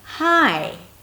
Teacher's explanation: I'm going up 'Hi' And then there is a little tail going up at the end. 'Hi' That means that something else is coming up, I'm not done.